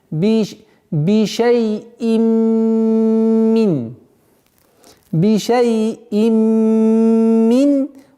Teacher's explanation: Вот здесь мы применяем и полный идгам с полной назализацией. Полная ассимиляция с полной назализацией. Идгам бигунна камиля.